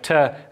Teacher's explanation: produced by the blade of the tongue pressing up against the alveolar ridge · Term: alveolar sounds